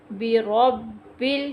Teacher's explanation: را کو پر کریں گے، اس کو پر زبر ہے